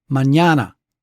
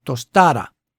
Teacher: They all have that same three syllable rhythm with the middle syllable getting the accent.